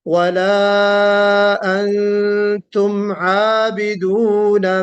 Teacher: उसके बाद फिर आइए, फिर वला में मद है, फिर अंतुम में गुन्ना है यानी इख्फा वाला गुन्ना